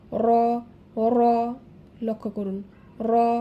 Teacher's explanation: এর মাখরাজ হচ্ছে জিহবার আগার উল্টা পিঠ তার বরাবর উপরের তালুর সাথে লাগাইয়া র উচ্চারিত হবে, এবং এটি একটু তাড়ন করে উচ্চারণ করতে হবে, অর্থাৎ জিহবার আগাটা কিন্তু একটু বেশি নাড়াচাড়া করবে বাড়ি খেয়ে